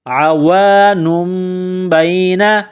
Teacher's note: عین کو گلے سے نکالیں گے